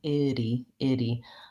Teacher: my tongue still taps up a B Eddie and releases but I don't build up a lot of air I don't really want to punch that D sound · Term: flap T